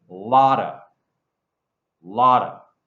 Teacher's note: if I say the word lot, it sounds like a T. But if I put it in the phrase, it sounds like a D.